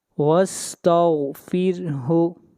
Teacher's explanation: یہاں پر غین ہے، غین حروف مستعلیہ میں سے ہے، اس لیے غین کو موٹا پڑھیں گے، وَاسْتَغْفِرْ، اور را سے پہلے زیر آ رہی ہے، اس لیے را کو باریک کر کے پڑھیں گے